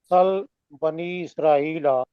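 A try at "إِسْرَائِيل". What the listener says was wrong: اسرائیل، لمبا کریں نا ذرا، اسرائیل۔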